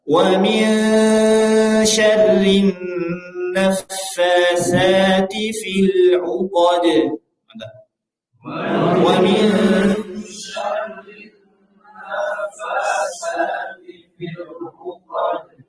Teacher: Perhatikan huruf ro. Huruf ro itu terkadang tebal, terkadang tipis. Nah ini tipis karena harokatnya kasroh.